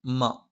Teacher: മ രണ്ടു ചുണ്ടും തുല്യമായി അടച്ചുവെക്കണം